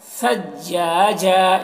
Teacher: یہ ثا کی آواز. ثجاجا، اس کو سین نہیں بنانا ہے